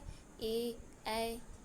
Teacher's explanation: कंठ तालव स्वर से ए बोला जाता है